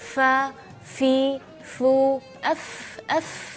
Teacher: ketika melafalkan huruf fa berasa angin agak kencang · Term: hams